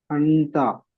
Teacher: নাকে তুলে এক আলিফ পরিমাণ গুণা করে পড়তে হবে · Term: ইকফা